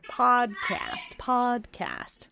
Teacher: So your mouth is quite open for both. One, your tongue is in the back and then it goes forward. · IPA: / ˈpɔdˌkæst /